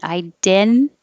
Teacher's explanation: And the first T is after an N. And when the T comes after the N in the unstressed syllable, you don't have to say it because your tongue is in the same position.